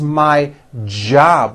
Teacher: you Spanish speakers whenever you see the letter J in English it always makes this J sound it's never a y sound never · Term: strong J sound